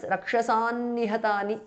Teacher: The anuswara changes to n because of sandhi.